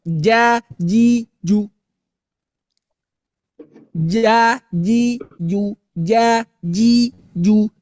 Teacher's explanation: nggak ada yang keluar udara, Pak. Kenapa? Karena dia jahar.